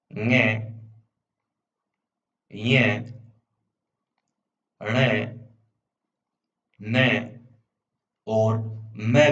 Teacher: नासिक्य व्यंजन जिनके उच्चारण में हवा का प्रमुख अंश नाक से निकलता है